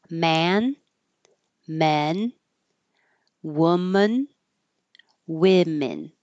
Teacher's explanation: the O doesn't sound like o it sounds like uh